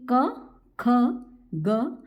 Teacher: क्या होता है क वर्ग में आपके पांचों वर्ड आते हैं क ख ग घ ण और ह और विसर्ग उच्चारण स्थान इनका कंठ है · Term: कंठ वर्ड